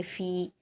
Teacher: फ़ा पर या मद्दा है, दो हरकत खींच कर पढ़ेंगे